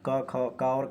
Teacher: क और ख जो होती है आपकी कंठ ध्वनि होती है